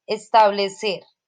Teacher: establecer viene a ser una palabra aguda. ¿Por qué? Porque su acento está en la última sílaba.